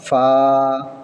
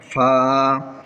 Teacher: নিচের ঠোঁটের পেট সামনের উপরের দুই দাঁতের আগার সঙ্গে লাগিয়ে উচ্চারিত হয় ফা।